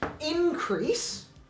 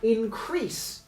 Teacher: moving the primary stress forward to the first syllable